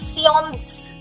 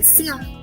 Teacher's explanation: The last letter is silent. And even N is silent. It's more nasal.